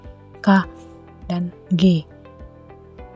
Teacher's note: bunyi yang dihasilkan yang pertama dorsovelar bunyi yang dihasilkan oleh punggung lidah atau dorsum dan langit-langit lunak atau velum